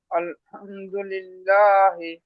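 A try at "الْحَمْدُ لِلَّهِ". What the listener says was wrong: মাশাআল্লাহ, আলহামদুলিল্লাহি।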